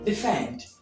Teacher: These are some few lists of common words that have the primary stress on the final syllables